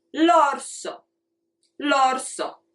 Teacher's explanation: So you start high, then you go low, and then you go back up. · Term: waves